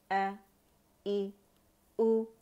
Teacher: अक़सुल हल्क से, अक़सुल हल्क इसका मखरज है, वहाँ से अदा होगा